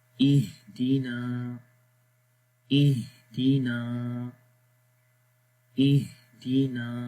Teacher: تو یہاں پر نون کے اوپر زبر ہے تو نون کو لمبا کریں گے